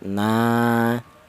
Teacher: Ini mad thobi'i panjangnya dua harakat.